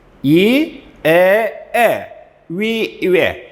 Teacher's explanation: 혀가 아랫니에 가서 붙었죠. 전설모음입니다.